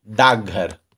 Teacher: घ के घोष होने के कारण, घोष अर्थात जिसके उच्चारण में स्वर तंत्रियां झंकृत होती है, उसे हम लोग घोष कहते हैं। तो घ के घोष होने के कारण क का घोष रूप ग हो जाता है, अर्थात घोष हो जाने की क्रिया काम करती है।